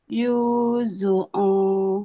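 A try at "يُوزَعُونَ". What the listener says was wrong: Yoza, bukan Yuzu ya. Yoza, Yozauna.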